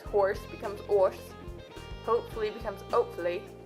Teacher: Drop your H's from the beginning of words.